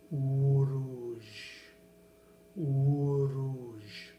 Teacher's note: So the way to pronounce Uruj is Uruj, Uruj. Now you're hearing the slight flick of the tongue on the top of the mouth to get that R sound.